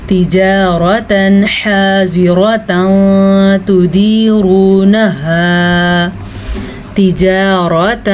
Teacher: را زبر کی صورت میں پر پڑھی جاتی ہے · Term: را کو پر